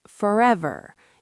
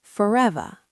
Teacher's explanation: Forever, American, forever. You can really hear that final R. British RP, forever.